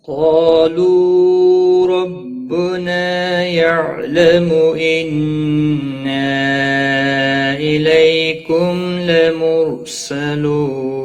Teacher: حروف مستعلیہ میں سے قاف ہے، موٹا پڑھیں گے۔ قاف کے ساتھ جو الف ہے اس کو بھی یہ بھی موٹا پڑھا جائے گا۔